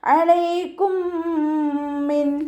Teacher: മീം തന്നെയാണ് വന്നിട്ടുള്ളത് ഇദആം ഷഫവി ആണ് വരുന്നത് മീം സാക്കിനയുടെ നിയമത്തിലുള്ള ഇദ്ആം സുക്കൂനായ മീമിനെ അടുത്ത മീമിലേക്ക് ലയിപ്പിച്ച് ഉന്നയോടുകൂടി ഓതി കൊടുക്കുട്ടോ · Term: ഇദ്ഗാം ഷഫവി